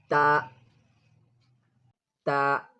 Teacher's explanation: The tip of the tongue, the tip of the tongue touches the upper teeth, the upper front teeth area. The tip of the tongue touches the upper front teeth area. Then comes back, ta, ta.